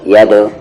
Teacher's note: دال ساکن ہے تو قلقلہ ہوگا، ید یعنی باؤنس کریں گے ساؤنڈ کو